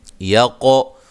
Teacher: قاف کو موٹا اور قلقلہ، دیغو را کو موٹا ادا کریں گے۔